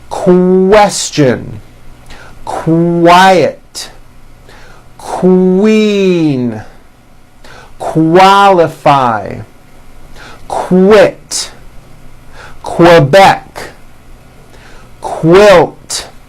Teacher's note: Q sounds are made with the K sound and the W sound · the word quick is pronounced with a K and a strong W sound